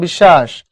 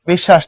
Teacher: এই যে এইটা বিশ্বাস, তালব্য শো ডাবল পড়ো